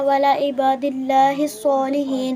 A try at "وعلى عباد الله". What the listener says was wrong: ولا نہیں کہتے بیٹے، ولا نہیں کہتے بیٹے، عین کو سکپ نہیں کرنا، ورنہ بہت غلط ترجمہ ہو جائے گا۔ وعلی عباد اللہ